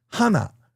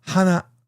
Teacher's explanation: one starts high and goes low and the other starts low and goes high. That's pitch accent.